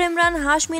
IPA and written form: ɪmraːn ˈɦaːʃmi (Emraan Hashmi)